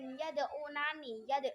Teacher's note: yad'unani, yad'u itu ada qalqalah sugra